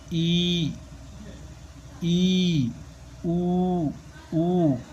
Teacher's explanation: जीभ ऊपर की तरफ उठी, तो बोल के देखो वर्ण ई, ऊ ऊ, ये जीभ ऊपर की तरफ उठ रही है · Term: संवृत्त वर्ण